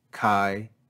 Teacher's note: this word since it's one syllable is going to be spoken with a lower pitch than our normal speech kai you hear the drop in pitch marked by the grav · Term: grav accent